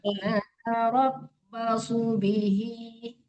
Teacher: Ya, hurufnya udah betul. Su-nya jangan ditahan, tidak panjang.